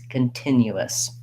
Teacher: i have my unstressed schwa come in my first syllable i have stress before the tin continuous still a clear t · i still have my yah glide and my uu vowel and then i just add in a schwa s